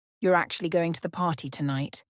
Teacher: it with a rising intonation it sounds like a question but if you say it with a falling intonation it sounds more like a statement or an expression of surprise